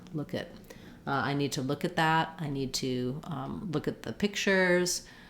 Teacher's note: a very reduced vowel between the k and the t